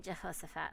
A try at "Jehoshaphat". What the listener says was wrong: Don't forget the SH, Jehoshaphat. Yeah, it's Jehoshaphat. Jehoshaphat.